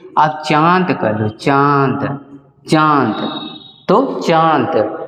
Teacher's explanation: जो चंद्रबिंदु होता है उसका उच्चारण में नाक से अधिक हवा निकलती है